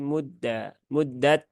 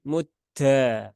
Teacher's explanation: menjadi mudha ya muddat Nah itu juga Ee tidak tepat karena Dal itu tidak ada sifat hamsnya ya Dia ee jahr ya jahr kemudian syidah